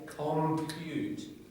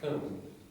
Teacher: if you have a weak vowel like cum, you can hear the pute strongly. So it just helps mark the stress more clearly, and that's of course what we want.